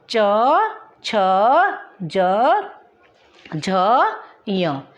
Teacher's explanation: तालु, जिसमें हम तालु का प्रयोग करते हैं। च, छ, ज, झ, य, ये हमारे च वर्ग में आते हैं।